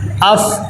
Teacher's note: کلکلا نہیں ہونا چاہیے، اف آواز رک جائے